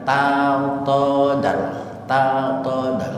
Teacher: Itu idgham mutajanisin karena tajanus. Satu makhraj, satu tempat antara dal dengan ta, makhrajnya sama-sama di ujung lidah.